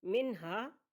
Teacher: حروف حلقی میں سے ہا آ گیا نون ساکن کے بعد تو یہاں پر اظہار ہوگا